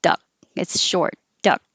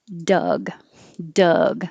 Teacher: when the last consonant in the word is voiced, meaning you have sound here, then the vowel gets a little longer. When the last consonant in the word is voiceless, meaning no vibration, the vowel gets a little shorter.